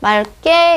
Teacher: 기역 앞에서는 리을로 이제 발음을 하더라